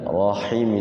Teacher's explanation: Ya, rahim itu pakai ha ya. Makhraj ha itu wastul halqi, di tengah-tengah tenggorokan, atau di sini buah khuldi ya.